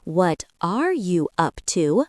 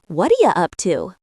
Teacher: They don't say, What are you up to? slowly and separately. It becomes, What ya up to? or What are ya up to? The sounds blend together. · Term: connected speech